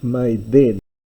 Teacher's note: Instead of may den, we get may then, because at this stage of the language, the delta has been softened into a th sound